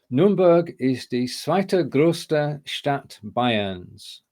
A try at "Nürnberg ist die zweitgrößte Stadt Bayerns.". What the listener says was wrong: Yeah, zweitgrößte, not zweite, but otherwise, if it said die zweite Stadt without the größte, then that would have been correct. But so Nürnberg ist die zweitgrößte Stadt Bayerns.